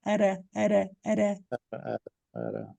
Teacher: Só que esse R aqui, gente, escrito com T, ele é um R feito na ponta da língua